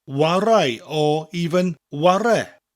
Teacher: sometimes people will shorten chwarae to warae or even ware.